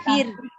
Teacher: Ro sukun sebelumnya kasroh, maka dibaca tipis.